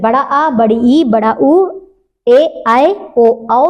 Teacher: दीर्घ स्वर जिसको बोलने में ज्यादा समय लगे, ह्रस्व स्वर से दुगना समय लगे, वो होते हैं दीर्घ स्वर।